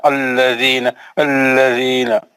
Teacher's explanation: لام موٹا پڑھا جا رہا ہے, اس کو باریک پڑھنا ہے